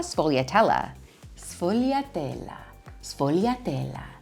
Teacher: The S and the F make a ssff; really quick and light and airy.